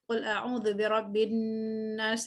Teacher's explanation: Gunnahnya kita baca panjang, lebih dari 2 harakat, 4 harakat malah. Kemudian di Qul a'udzu birabbin nas, nasnya kita wakaf dengan 2 rakaat. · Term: gunnah yang akmal